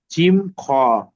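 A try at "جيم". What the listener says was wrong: জি, জিম, তিন আলিফ টান আছে, তিন আলিফ টান দিয়ে বলবেন জিম।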